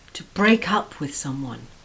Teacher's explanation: notice the stress on the up word